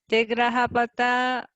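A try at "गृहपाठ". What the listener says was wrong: So the pronunciation will be Gruha Part, not Patha. Yeah, Gruha Part, Path.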